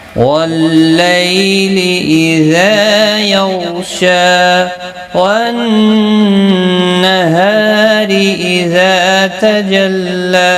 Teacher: نون مشدد پر گنہ ہوگا، ہا الف مدہ ہے، را زیر کی وجہ سے باریک پڑا جائے گا۔ اذا الف مدہ ہے، ایک الف کی مقدار کے برابر کھینچ کر پڑھیں گے۔